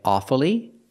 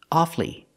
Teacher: sometimes you'll hear Americans say awfully and pronounce it with three syllables pronouncing the U following the rule